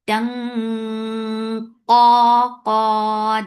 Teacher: to create heavy ikhfa, you're lifting your tongue up because you're keeping your tongue closer to the makhraj of qaf. Tung, qa, then it will be heavy and make it 2 counts long.